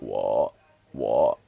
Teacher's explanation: it sounds like you have like a croaky voice when when you're trying to pronounce it